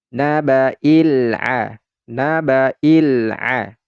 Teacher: alif lam qamariyah, lamnya ini terdengar ya, lam sukunnya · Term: izhar qamariyah